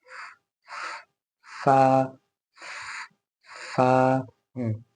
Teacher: यहाँ पे हल्का हल्का है, यहाँ गीला है। तो होंठ का जो गीला हिस्सा हल्का सा शुरू हो रहा है, ऊपर के दांतों को वहां टच करना है